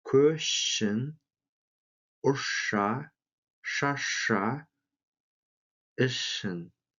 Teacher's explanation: Звук «ш» влияет на последующий звук «с», и тот произносится как «ш».